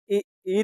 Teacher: तालू से ई निकलती है